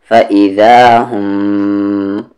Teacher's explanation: میم پہ تشدید آ گیا تو یہاں پر غنہ کریں گے، فَإِذَا هُمْ، غنہ یعنی آواز کو ناک میں رکھیں گے، من الاجداثی، اج یہاں پر قلقلہ کریں گے جیم پر، باؤنسنگ ساؤنڈ ہوگی کیونکہ جیم ساکن ہے، اجداثی۔